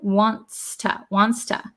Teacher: It almost disappears because it's a TS sound, wants to. But I think it's still there.